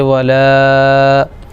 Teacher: حرف مد کے بعد حمزہ آ رہا ہے اس لیے مد منفصل ہو جائے گا تو اس کو 2-3 الف کھینچیں گے